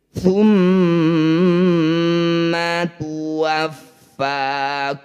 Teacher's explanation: Thumma, setiap ada mim atau nun yang bertanda tasydid disebut bacaan gunnah musyaddadah. Bunyi mim ini kita dengungkan 2 harokat sambil merapatkan bibir.